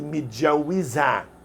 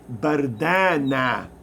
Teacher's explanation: to make the feminine cases for adjectives instead of i they pronounce it with an a